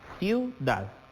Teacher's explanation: La sílaba tónica recae en dad.